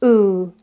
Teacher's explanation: ooh in English is described as back but it's actually central it's a central and high vowel